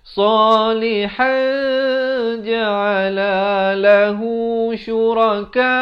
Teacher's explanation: Tanwin bertemu jim. Jadi disamarkan di antara nun dan jim itu kadar 2 harakat. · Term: ikhfa hakiki